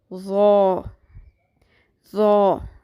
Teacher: جب زبان کی نوک اوپر والے سامنے کے دو دانتوں کے کناروں سے ٹکراتی ہے تو ظو ادا ہوتا ہے. ظو کی آواز پر ہوتی ہے، اس کی آواز میں شدت نہیں ہوتی. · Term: ظو کا مخرج